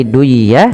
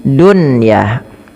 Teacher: Nah, pada lafal yang dia satu kata apabila ada nun mati ketemu ya atau wau satu kata pada satu kata tidak diidgamkan tapi dibaca dengan jelas suara nunnya dan ini dikenal dengan istilah izhar mutlak.